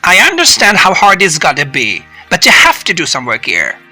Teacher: Notice how I pause for just a moment between the two sentences, and notice how my pitch, the musical note of my voice, goes up on stressed content words and goes down at the end of each sentence.